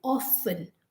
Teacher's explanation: in india we say often or finn it's like o f f e n not o f t e n the t is completely silent